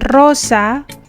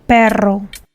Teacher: the rolled R sound when a word begins with ere, like in rosa, or when the word contains double ere, like in perro